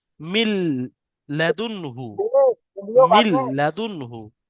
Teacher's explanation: এই নুনটাকে লামের সাথে মিলিয়ে বিনা গুণনায় তাড়াতাড়ি পড়তে হবে, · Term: ঈদগামে তাম